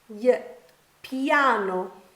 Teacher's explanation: For example, in the word piano, we have the two vowels I and A together, and they produce a Y-type sound. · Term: diphthongs